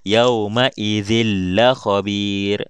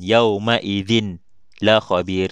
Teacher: Kita masukkan terus bunyi tanwin ini ke dalam huruf lam. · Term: idgham bila gunnah